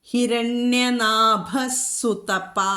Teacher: സാ വന്നതുകൊണ്ട് അവിടെ വിസർഗസ്ഥാനത്ത് സായുടെ പകുതി സ ചൊല്ലണം